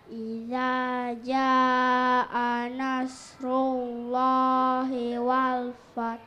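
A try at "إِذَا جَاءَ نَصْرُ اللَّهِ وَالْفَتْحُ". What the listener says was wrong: Wal fath. Oke, berikutnya coba.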